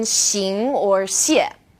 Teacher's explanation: this sound is somewhere in the middle of SH and S